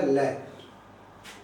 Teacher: यू आकार में जब जिह्वा मुड़ती है तो दोनों बगलों से प्राणवायु निकल जाती है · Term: पार्श्विक